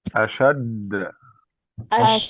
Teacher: أشا. دال حرف مشدد موقوف عليه. حرف مشدد موقوف عليه. مع القلقلة.